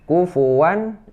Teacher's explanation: Kufuwan idhar, ini tidak berdengung.